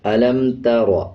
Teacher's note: را کے اوپر جب زبر آ جائے تو را کو پر پڑھا جاتا ہے، یعنی موٹا پڑھا جائے گا